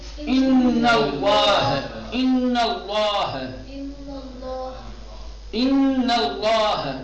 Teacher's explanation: لام سے پہلے جب زبر یا پیش ہوگا تو لام کو تغلیظ کے ساتھ پڑھیں گے موٹا بنا کر کے، اور اگر زیر ہوگا تو ترقیق۔